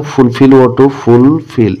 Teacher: the word fulfill is pronounced with more force on the second syllable